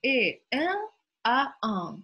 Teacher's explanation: Первое вот в этом слове — это носовое «э», а второе «он». Они не отличаются, в принципе, от ртовых звуков. То есть «э», «а», только корень языка опущен.